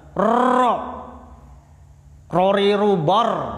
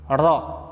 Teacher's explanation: ada sifat yang namanya takrir, satu kali getaran halus